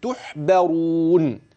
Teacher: الراء في كلمه تحبرون تفخم لانها مضمومه